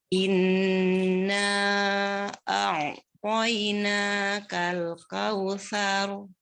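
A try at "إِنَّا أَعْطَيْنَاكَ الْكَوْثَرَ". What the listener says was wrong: Ya, tidak panjang saknya Umi. Saru, tapi langsung saru. Kakal, kaknya satu aja Umi.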